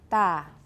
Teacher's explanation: Voiceless, unaspirated, alveolar initial.